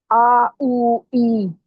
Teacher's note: جوف میں سے آ او ای، آ الف، او واو، ای یا، یعنی الف مدہ، واو مدہ، یا مدہ، یہ تینوں حروف ادا ہوتے ہیں جوف سے، یعنی منہ کے خالی حصے سے